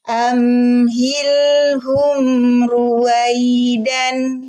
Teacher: Fathatain, ada suara an. Kita belum waqaf, alif belum berfungsi. Kita masih bunyikan izhar, suara an di tanwin.